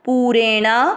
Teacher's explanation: पू पे बड़े ऊ की मात्रा लंबा खींचना है